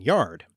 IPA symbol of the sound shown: j